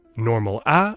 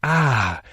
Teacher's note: normal a which linguists call modal voice but also breathy voice ah and creaky voice ah